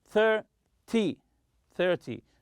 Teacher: in 10 numbers, such as 20 and 30, always stress the first syllable.